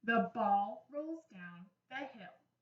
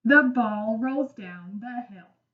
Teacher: For a period at the end of a sentence, your voice goes lower and stops when you read.